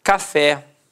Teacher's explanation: Repare que a sílaba tônica é a última e é terminada de fato em a.